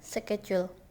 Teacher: Word stress on the first syllable.